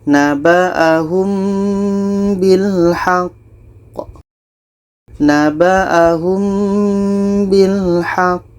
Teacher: Jadi di sini ada qa mati diiringi tasydid. Pada akhir bacaan ini qalqalah akbar. Cara bacanya kita berhenti 2 detik baru pantulkan.